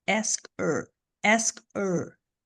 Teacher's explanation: Esse H, esse som do H some aqui, tá?